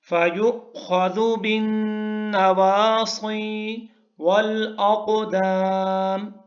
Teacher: بن نواصی میں نون کے اوپر، نون مشدد ہے تو اس لیے غنہ ہے